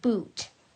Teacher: you can really see how stretched out and long this vowel section sounds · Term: long vowel sounds